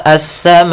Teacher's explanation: di sini ada mad wajib muttasil, yaitu adanya huruf hamzah yang datang setelah huruf mad, maka ia kita panjangkan sepanjang 4 harokat.